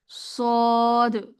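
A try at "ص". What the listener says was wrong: সদ না আপু সদ না আপু সো বলা যাবে না শুধু সটা উচ্চারণ করতে হবে। হ্যাঁ আর মোটা করে উচ্চারণ করবো গোল করে মুখটা গোল করে মানে দুই ঠোঁট গোল করে মুখ বলতে কি আমি ঠোঁটটা বুঝাইছি। ঠোঁটটা গোল করে তারপরে হচ্ছে উচ্চারণটা করবেন। খেয়াল করে জিহ্বার গোড়াটা উপরে উঠাতে চেষ্টা করবেন।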